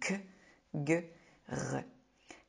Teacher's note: car ils sont produits très en arrière dans la bouche et le voile du palais.